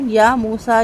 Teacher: سین کا کھڑا زبر بھی دو حرکت لمبا